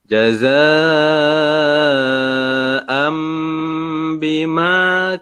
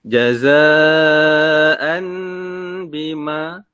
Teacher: Maka ini namanya adalah iqlab. Sebab asalnya dua tanwin bertemu dengan huruf ba. Maka tanwin itu ditukarkan dengan huruf mim.